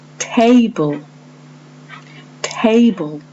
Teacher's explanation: So if the word is table, the syllable stress is on the first part, te, and it is that part which is said loudly and clearly.